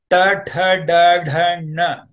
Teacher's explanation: The tongue is folded inwards in a retroflex manner and touching at the top of your mouth, which is called cerebrum. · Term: Tavarga series